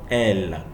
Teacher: the air escapes from both sides of the tongue